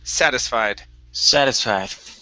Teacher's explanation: stress at the very beginning